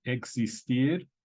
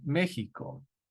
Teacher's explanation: It can have a CS type of sound, as in existir, or it can have a J sound, like in Mexico. You might even see Mexico spelled sometimes with a J, Mexico.